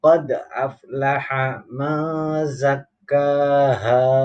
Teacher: Qad, tadi qalqalah sughra, ada huruf qalqalah berharokat sukun atau mati.